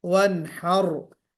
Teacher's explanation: रा को पुर नहीं किया आपने, रा को पुर करना है